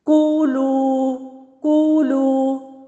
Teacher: لو واو مدہ ہے تو آزادانہ ہوا بہہ رہی ہے